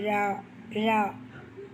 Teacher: தோன்றுவது ல நா மேல் அன்னத்தின் நடுப்பகுதியை தொடுவதால் தோன்றுவது லா நாவின் நுனி நாவின் நுனி மேல் நோக்கி வளைந்து வருவதால் தொடுவது